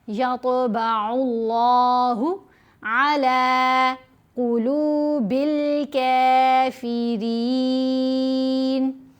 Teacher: يَطْبَعُ اللَّهُ, طوا کو موٹا بھی پڑھنا ہے, طوا کے اوپر قلقلہ بھی کرنا ہے. عین کو لام سے ملاتے ہوئے لام کو لمبا بھی کرنا ہے, موٹا بھی پڑھنا ہے